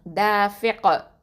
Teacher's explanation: காஃபில் வந்து சுக்கூன் வச்சிட்டோம் அப்படின்னு சொன்னால் என்ன பண்ணணும், கல்கலா குப்ரா கொடுக்கணும், தாஃபிக். ஓகே, ஹுலிக மிம்ம இன்தாஃபிக்.